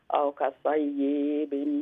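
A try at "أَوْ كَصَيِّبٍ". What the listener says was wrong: नहीं या लंबा ना है औ कसय्यिबिन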